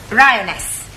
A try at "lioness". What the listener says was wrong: no l l r r you're not saying it right